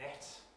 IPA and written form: net (net)